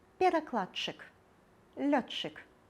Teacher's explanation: Дч і тч вымаўляецца як падоўжаны ч.